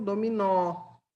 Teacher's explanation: e a oxítona é a última palavra mais forte